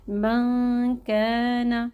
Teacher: ہم اس نون ساکن کو ادا کرتے وقت اپنی زبان کو بالکل نون کے مخرج سے ٹچ نہیں کریں گے، ٹھیک ہے، اور ہم اس کو زبان کو بالکل بیچ میں رکھیں، پڑھیں گے من کان۔ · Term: اخفا